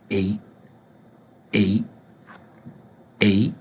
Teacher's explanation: number six the number seven the number eight eight or just eight where the t is not pronounced